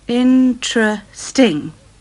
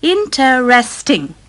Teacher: You say interesting. 3 syllables. Interesting. Some people say interesting. 4 syllables.